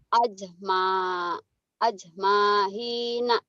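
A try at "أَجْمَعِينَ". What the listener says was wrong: Bukan hin. Ajma'in. Ajma'in. Ajma'in.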